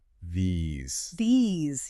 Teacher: If you don't buzz that Z and you don't stretch that E, people will think you're saying the singular this. So this is a snap, these is a stretch. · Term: a buzz